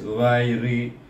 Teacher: ra baris di bawah pun ini dibaca dengan nipis